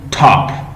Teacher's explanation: When you say top, it means your mouth will give puff. It will puff out. It will give plosive sound, plosive voice.